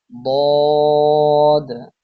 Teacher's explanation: জিহ্বার গোড়ার কিনারা উপরের মাড়ির দাঁতের গোড়ার সঙ্গে লাগিয়ে উচ্চারিত হয়